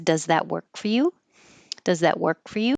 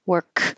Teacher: you don't hear k, work. You hold that K.